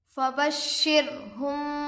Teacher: रॉ पर जज़म है, रॉए साकिना होगा, रॉए साकिना से पहले ज़ेर आकर है, बारीक पढ़ेंगे। · मीम साकिन के बाद बा आकर है, गुन्ना के साथ इक्फ़ा होगा, इसको इक्फ़ाए शफवी कहते हैं।